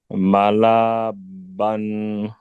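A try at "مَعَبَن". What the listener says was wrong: Not mala.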